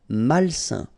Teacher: A-I-N together, it's a nasal and it's un.